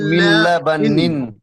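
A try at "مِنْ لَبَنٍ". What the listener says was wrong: মিল বলে তো ধরে থাকলে গুন্না হয়ে যাবে, বিনা গুন্না পড়তে হবে। মিল্লাবানিন, মিল্লাবানিন।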